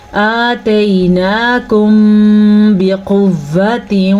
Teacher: जबकि मीम साकिन के बाद हर्फ बा आया हुआ है तो यहाँ पे इख्फ़ाए शफ़वी का कायदा होगा। याद रखें, जब भी मीम साकिन के बाद हर्फ बा आ जाए तो दोनों होंठ बंद हो जाते हैं और बंद होठों के साथ गुन्ना भी होता है